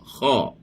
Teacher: Masuk ke dalam, bukan daripada dalam mulut, dia dalam halkum. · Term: huruf halqi